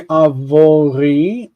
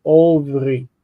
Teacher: You don't say avori. This actually becomes o, ovri.